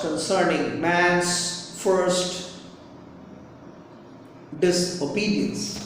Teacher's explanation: emphasis falls on the second and third words and then on the first and third syllables of this obedience